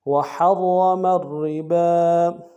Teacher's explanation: را کے اوپر تشدید زور دیں گے، پہلا را موٹا دوسرا باریک، با کے اوپر کھڑا زبر ہے، ایک انتہا میں کھینچیں گے.